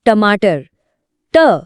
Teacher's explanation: ट बोलते ही जीभ कैसे गोल घूम कर ऊपर लगी। बस यही मेन फर्क है।